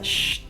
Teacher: Digamos que el sonido de la SH, el sonido sería sh, y eso no produce vibraciones en las cuerdas vocales, entonces a eso se le llama unvoiced y tiene una pronunciación diferente.